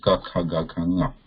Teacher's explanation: First line, the place of pronunciation of that one is this back of the throat here. So back of the tongue touching the back of the throat is needed to produce the first line of consonants